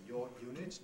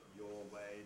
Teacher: you don't get linking r before yod and w